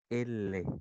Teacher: En el caso de los laterales te dice que el aire, ¿sí? Sale por los lados de la boca.